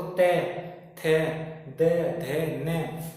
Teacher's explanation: ते मतलब जीभ दांतों से बोले जा रहे, जो हमारी जीभ है कहाँ पे लगती है, दांतों पे। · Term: दंत्य